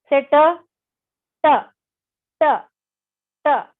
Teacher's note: the tongue was rolling back a little bit